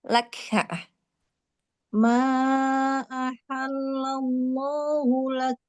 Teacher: Percikan hamsnya mau lebih terdengar lagi.